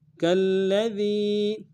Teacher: کاف کو لام ساکن کے ساتھ ملانا ہے، تشدید ہے لام کے اوپر تو زور دیں گے، اور دال کو یا کے ساتھ ملانا ہے، یا مدہ، ایک الف دال میں کھینچیں گے، دال کو باریک ادا کریں گے۔